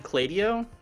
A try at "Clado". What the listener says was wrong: That sounds wrong because the E isn't after the D.